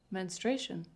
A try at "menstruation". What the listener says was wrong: You're saying it like you're scared. Don't say it like you're scared. Say it like it's normal. Menstruation.